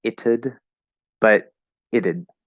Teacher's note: The way we naturally say this, are you ready? It's with a flapped D.